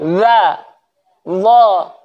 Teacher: Itu kan tiga huruf itu kan makhrajnya sama ya, tapi sifatnya berbeda. Jadi dha itu ujung lidah ketemu ujung gigi.